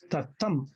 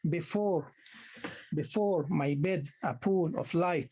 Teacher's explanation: the first syllable is unstressed, the second syllable is stressed. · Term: iambic